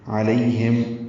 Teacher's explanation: عین وسط حلق سے ادا ہوگا